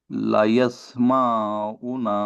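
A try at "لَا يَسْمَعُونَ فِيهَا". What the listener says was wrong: লা টান দেন, লাম আলিফ জবর লা, আলিফ মাদ্দা। লা ইয়াসমাউনা, আইন ও পেশ ও মাদ্দা। লা ইয়াসমাউনা, লা কে টান দেন এক আলিফ।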